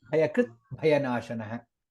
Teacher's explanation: in both the places bha is mahaprana